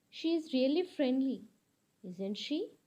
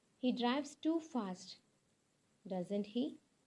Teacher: in this case you need to use a falling intonation